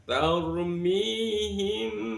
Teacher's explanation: Hukum bacaannya namanya ikhfa syafawi, disamarkan antara mim sama ba, kemudian ditambah dengan gunah